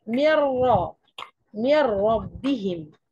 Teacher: النون دخلت ادخالها كاملا في حرف الراء بحيث اصبحت الراء هنا حرفان اي ان الراء اصبحت مشدده يعني ايه مشدده يعني حرفين زي